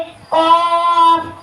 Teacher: زبان کی جڑ اور تالو کے نرم حصے سے ادا ہوتے ہیں